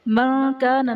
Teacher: نون ساکن کے بعد حروف اخفا میں سے کاف آ رہا ہے تو یہاں پر اخفا کا قاعدہ ہوگا، یعنی نون ساکن میں ہم غنہ کر کے پڑھیں گے